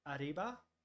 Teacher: But then in like Spanish, you would have like an R and a double R, right? And the traditional R is almost a rhotic, but you sort of tap the roof of your mouth, arriba, right?